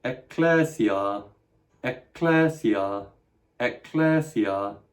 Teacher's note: You can hear that I'm trying to double it up in the same way we double up T in rat trap